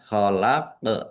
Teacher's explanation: Qof sukun bacaan qalqalah. Khalaq dibaca memantul ya. Ditampakkan pantulannya. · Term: kolkolah